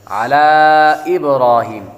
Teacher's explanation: ابراہیم, با کو قلقلہ کریں گے, با حروف قلقلہ میں سے ہے